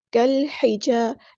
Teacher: ظاہر کریں گے ہا، ہا کو مستحل کریں گے، تھروٹ سے ادا کرنا ہے